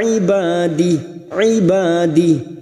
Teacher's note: Ba fathah diikuti alif dua harakat kita panjangkan. Di ad-dhamir yang berharakat panjang alif kecil di bawah, namun kita membaca waqaf pada tanda qaf lam, al-waqfu aulah, maka ad-dhamir kita baca sukun.